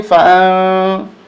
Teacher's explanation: اخفا ہوگا، ناک میں آواز چھپائیں گے